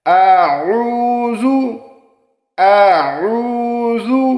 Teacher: قل اعوذ، اکثر دوست اس کو اعوذ پڑھتے ہیں، عین کا مخفف ادا نہیں کرتے۔ عین کو آپ نے حلق سے ادا کرنا ہے۔